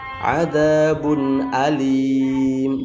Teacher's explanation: Intinya kalau ada nun sukun atau tanwin bertemu dengan 6 huruf ini maka disebut idgham halqi. Jelas nunnya sukunnya tidak boleh terlalu dengung ya, dikit aja. Jangan adabun alim, salah.